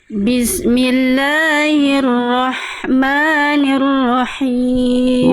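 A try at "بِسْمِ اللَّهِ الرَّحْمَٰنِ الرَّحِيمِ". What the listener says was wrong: Bagus, tapi him jangan masuk hidung. Him, hi, jangan him. Jangan masuk hidung, hi-nya.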